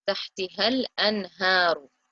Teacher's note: This is id-haar. The noon sakin has to be recited clearly without any nasalization, because it's followed by the letter ha.